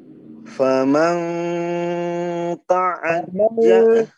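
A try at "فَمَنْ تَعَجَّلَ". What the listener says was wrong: Jangan famang, jangan banyak dengung. Famang, mal. Jangan sampai banyak ya.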